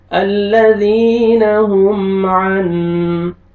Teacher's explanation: یہاں پہ میم ساکن کے بعد عین ہے یہاں پہ آپ نے اخفا نہیں کرنا میم کو جلدی سے پڑھیں گے